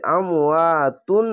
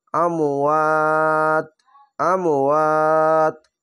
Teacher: এই আমওয়াতুন না বলে আমওয়াত, আমওয়াত। তিন আলিফ টেনে পড়বেন। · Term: মাদ্দে আরজি